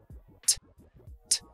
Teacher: Tengo la lengua en la zona alveolar. Justo detrás de los dientes, arriba pegado, en esa zona del paladar dura que hay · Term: consonante oclusiva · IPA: /teibəl/